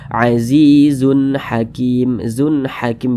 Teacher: Huruf H termasuk salah satu huruf izhar halqi, maka tanwin berjumpa dengan huruf H hukumnya izhar halqi, dibaca jelas, tidak berdengung. Jadi dibaca pendek saja.